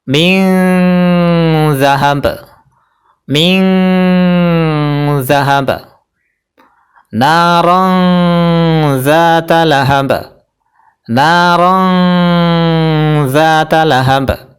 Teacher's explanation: Jadi tanwinnya mendekati huruf ny, nun matinya cara bacanya juga mendekati huruf ny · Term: ikhfa ausat